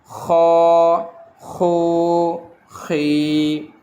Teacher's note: اگلا حرف گلے سے نکلے گا خ، بلغم نکالنے کی طرح